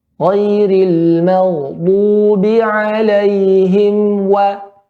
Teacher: pada mim, ya, bintibaqi syafatin, dengan merapatkan kedua bibir. Pada waw dengan mengedepankan kedua bibir. Tapi sama-sama letaknya pada bibir, maka kita berhati-hati.